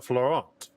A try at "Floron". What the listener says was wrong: Floron. So, they don't say the T.